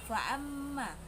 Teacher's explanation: Hukum tajwid gunnah karena mim fathah bertasdid, cara bacanya dengung dan ditahan.